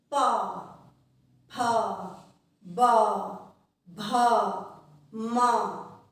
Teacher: हमारे जो होंठ हैं वो एक दूसरे को टच करते हैं, हमारे होंठ आपस में टकराते हैं।